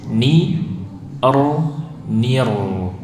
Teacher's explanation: Jadi ni-nya jangan ikut tebal, ni-nya tetap tipis. Ni nir ya, jadi bukan nir, tapi nir, r-nya yang tebal, bukan ni-nya.